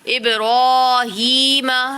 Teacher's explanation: را پہ کھڑی حرکات ہے تو را کو ایک الف یا دو حرکات کے برابر کھینچ کر پڑھیں گے